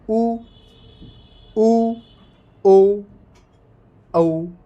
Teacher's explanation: उच्चारण करेंगे तो अपना मुंह गोल हो जाएगा। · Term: वृत्तमुखी